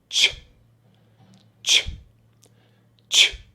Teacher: A little bit like when we want to ask someone to be quiet, we say shh. And the CH sound is just one strong puff of air and then it stops.